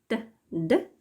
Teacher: T, d are alveolar since the tongue blade is pressed against the alveolar ridge. Normally, the tongue does not touch the front teeth as it does in the dental plosives found in many languages.